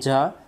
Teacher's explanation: এই জা অক্ষরটাকে আমার পড়ার জন্য শীষ দিয়ে পড়তে হবে